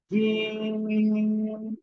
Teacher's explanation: 3 আলিফ টান হবে, শক্ত আওয়াজে